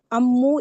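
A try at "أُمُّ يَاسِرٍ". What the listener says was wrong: उम्मू, सही पढ़ा था आपने पहले। हमजा के ऊपर पेश है, हमजा के ऊपर पेश है, उम्मू यासिरिन।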